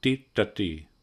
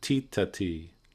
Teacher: the dot below the T's indicates a different position called retroflex, which means that in fact the tongue is back. It's not a sound we have very much in English.